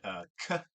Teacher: k made on the posterior side of the hard palate